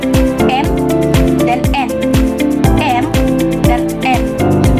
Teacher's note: Huruf M dan N dihasilkan oleh udara yang keluar dari hidung atau bisa kita sebut dengan persenggawan atau nasal